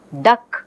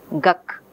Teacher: the later occurring velar sound ka is influencing the first sound. Okay, instead of saying the, which requires moving the place of articulation, the child is staying with velar articulation. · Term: assimilation